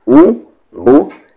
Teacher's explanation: पेश को मारूफ पढ़ा जाएगा यानी कि ऊ पढ़ा जाएगा, ना कि मजहूल ओ